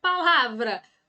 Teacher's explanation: mais forte fé então é a sílaba tônica a palavra palavra Qual é a sílaba mais forte é o lá então é a nossa sílaba tônica